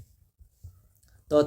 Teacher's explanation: जीभ जाके दांत से दांत पे ऊपर वाले भाग पे टच कर रही है, तो ये दंत हो जाएगा उच्चारण स्थान।